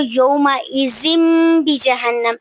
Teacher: تو ہم نے تنوین کی آواز کو میم میں بدل دینا ہے. اسے اقلاب کہتے ہیں، اور اقلاب کا مطلب ہوتا ہے بدلنا، یعنی کہ جو ہے تنوین کی آواز کو میم میں بدلنا.